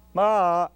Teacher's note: begins that sound begins with an attack an ikus Ma and ends in a descending Glide ma that's the way we speak ikus plus Glide Glide of